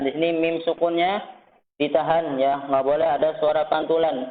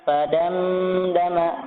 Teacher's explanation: mim sukunnya ditahan ya, enggak boleh ada suara pantulan